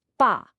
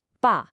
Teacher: It's falling. Listen closely. It starts high and just drops. · And let's really focus on the tone here because it's everything. It's the fourth tone. It's sharp. It's definitive. It's falling.